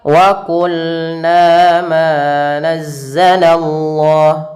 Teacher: Fathah bertemu alif yaitu mad thabi'i. Panjangnya dua harakat.